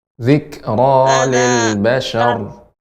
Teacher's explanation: Zikra dan juga ra-nya tebal